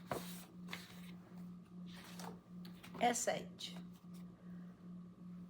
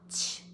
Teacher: SH is just blowing out air, but the tongue is so close to the top of the mouth and the teeth are almost closed. Very little air can go through.